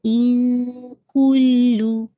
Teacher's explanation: ان کلو، کاف کی دمہ کو واضح کیجیے گا. ان کلو، لو لام کی دمہ اسٹریچ نہیں ہونی چاہیے